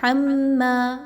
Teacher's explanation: میم مشدد ہے، میم پر غنہ کرتے ہوئے پڑھیں گے